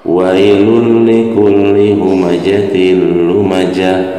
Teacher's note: Hukum bacaannya adalah idgham bila guna. Jadi lamnya cukup ditekan saja. · Nah, ini ada tak marbutoh. Tak marbutoh apabila disukunkan berubah menjadi huruf H ya, H besar.